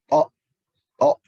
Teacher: huruf to ini di ujung lidah, menempel ke gusi gigi seri atas